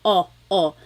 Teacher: I think of it like having a ball in your mouth your tongue gets kind of pushed back and down a little bit and the inside of your mouth is open and wide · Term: letter O